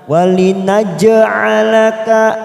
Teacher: huruf jim sukun qala sugro kita pantulkan. Walinaj'alaka fathah berdiri 2 harokat.